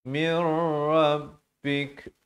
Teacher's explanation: idgham bila gunnah, masuk tanpa dengung daripada min rabbika jadi mir rabbik